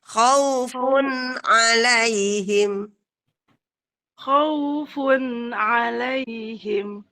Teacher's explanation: Tapi kho-nya dikasih ngorok ya, Bun.